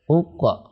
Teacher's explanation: Qaf ketika disukun itu dibaca qalqalah. Qalqalah artinya memantul. Qaf, ya, kalau disukun.